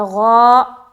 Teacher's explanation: غین موٹا حرف ہے لہٰذا غا ایسا بولنا ہے